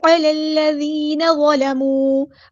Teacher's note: الف مد آیا تو مد اصلی کریں گے، علی الذین ظلموا، عین کو مستحلق مڈل تھروٹ سے ادا کرنا